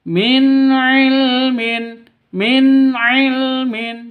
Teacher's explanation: nun mati bertemu dengan ain jelas terang karena izhar halqi